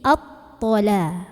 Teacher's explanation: Karena ada alif lam ta'rif bertemu dengan huruf syamsiyahnya ta. Maka lamnya tidak dibaca. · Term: alif lam syamsiyah